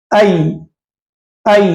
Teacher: और याय लीना की अदाई का तरीका क्या है, ऐ जबान के बीच ऊपर तारों को लगाना है।